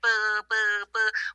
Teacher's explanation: We're vibrating our vocal cords versus P, we're not. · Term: voiced